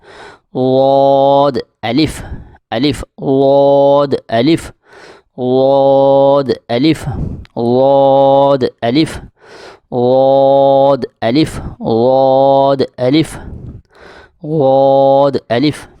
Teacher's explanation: زبان کی بائیں کروٹ اوپر والی داڑھوں سے لگے تو یہ ادا ہوتا ہے